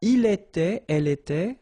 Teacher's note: final T not pronounced